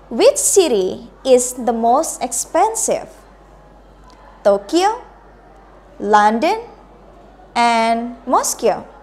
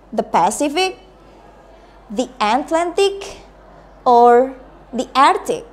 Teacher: Pilihan pertama menggunakan raising berarti naik, pilihan kedua menggunakan raising juga berarti harus intonasinya naik juga, yang terakhir turun.